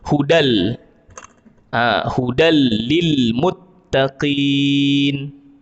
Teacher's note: maka bacaannya kita baca seolah-olah dia ada dua huruf lam di situ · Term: Idgham